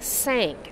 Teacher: if you get your tongue back a little bit, people will think you're making an S sound, and it'll sound like sank instead of thank.